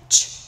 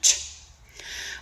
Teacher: All right, here we have ch. This sound is a production of starting with a stop sound and then releasing the air through a small opening, ch, which causes that friction.